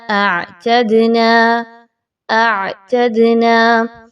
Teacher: عین کے مخرج پر خاص توجہ دیں گے، پھر دال پر قلقلہ ہوگا